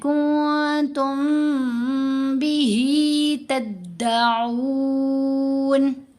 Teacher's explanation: تو ہم نے پڑھا کنتم، غنہ کیا، نون کو خفیف کر دیا، کمزور کر دیا، چھپا لیا. پھر میم ساکن کے بعد جب با آئے تو میم ساکن کا احفا. اب میم کے اوپر بھی غنہ کرنا ہے